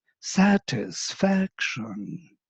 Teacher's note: every time we make an accent in the word, if I accentuate the word, you can hear in my intonation, I always go down before I go up